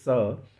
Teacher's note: क्योंकि इनका जो उच्चारण ऊष्म, ऊष्म का मतलब होता है ऊष्मा, हीट। ठीक है, एक प्रकार की रगड़, मुंह से एक हवा निकलती है · गर्म हवा सी जो है मुंह से पास होती है और एक रगड़ उत्पन्न होती है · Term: ऊष्म व्यंजन